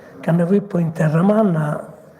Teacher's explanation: la F in posizione intervocalica si sonorizza e diventa V